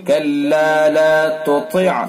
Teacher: پہلے تا ہے اس تا کو باریک پڑھیں گے، پھر طا ہے اس کو پر